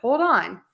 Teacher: And we would stress the on because that is a verb.